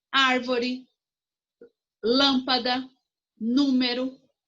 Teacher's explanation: proparoxítona a sílaba tônica é a antepenúltima